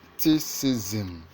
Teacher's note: criticism has its stress on the first syllable, so it's criticism.